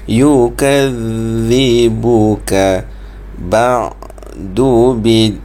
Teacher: Zal di situ huruf sebut seperti huruf Z tetapi keluar lidah sedikit.